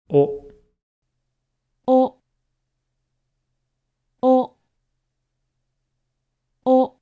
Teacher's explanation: while the lips do round a little bit, they certainly do not stick out. So I think the term neutral lips is still appropriate for describing O to native English speakers who have the tendency to push their lips forward when they hear the words round your lips.